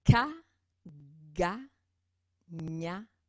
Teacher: il y a le dos de la langue qui va frapper l'arrière du palais